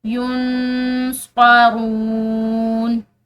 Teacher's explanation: یون نون ساکن ہے، اس کے بعد صاد حروف اخفا میں سے ہے، تو یہاں پر ہم نے نون ساکن پر اخفا کرنا ہے